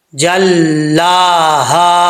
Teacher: یہ ہا جو ہے یہ بھاری ساؤنڈ کے ساتھ پڑھا جائے گا